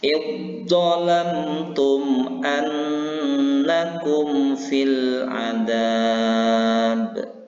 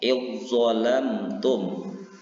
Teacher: Jadi masuk huruf zalnya kepada huruf za-nya. Jadi jangan kedengaran huruf zalnya, tetapi huruf za. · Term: idgham mutajanisain